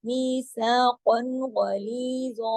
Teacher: غلی لی کو باریک پڑھیں گے 2 حرکات کھینچیں گے اور غلیظا کو موٹا بھی پڑھیں گے اور 2 حرکات بھی کھینچیں گے